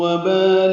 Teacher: وبال واو ہونٹ کی نا تمام گلائی سے ادا کریں گے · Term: واو متحرکہ